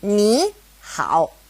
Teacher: when two third tones are side by side, the first one becomes a second tone